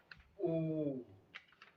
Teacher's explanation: कंठ से भी आवाज आ रही है और ओठ की आकृति भी बदल जा रही है